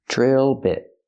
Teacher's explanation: Not beat with a long E, but the short I like this is.